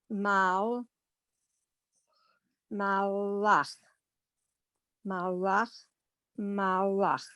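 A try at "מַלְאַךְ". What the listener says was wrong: Let me correct you on the last 3 words. It's mal, ach. It is not malach. You've got to put a dead stop, mal, ach.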